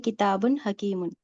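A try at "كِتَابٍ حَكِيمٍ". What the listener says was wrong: کتاب, تا پہ الف مدہ ہے نا, تھوڑا سا کھینچیں گے دو الف کو, دو حرکتوں کے بعد.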